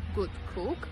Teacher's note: when pronouncing d before g or k d becomes g